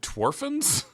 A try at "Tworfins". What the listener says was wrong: Oh, I didn't hear you say Tworfins. I thought you said orphans. Your pronunciation wasn't very good, but I let it go because I figured the audience didn't notice it. it just sounded like orphan.